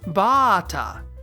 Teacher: moving the extension from the last vowel to the first vowel